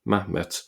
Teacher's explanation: Here we have Mahmed, with just a single A there, Mahmed. So the het has been dropped because it's silent, following the Samaritan type of pronunciation.